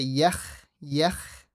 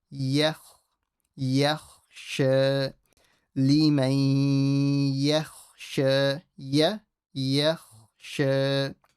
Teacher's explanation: The ya will stay empty exactly as it was. Just the kha, only the kha, will be slightly full.